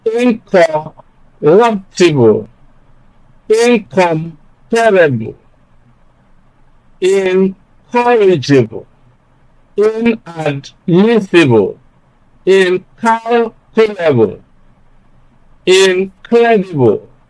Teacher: you just bypass the prefix and place stress on the syllable that follows it